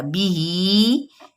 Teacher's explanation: با کی زیر کو باریک بھی پڑھیں گے اور ساتھ میں اس کو نہیں لمبا کرنا ہے کہ بی ہی، بی کو کھین دیا اور ہی وہیں پہ رہ گیا، نہیں.